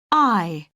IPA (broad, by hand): aɪ